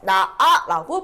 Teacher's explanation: 자, 나아 어미죠. 그래서 형식 형태소고 히읗이 탈락돼서 나아라고 발음돼요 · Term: 히읗 탈락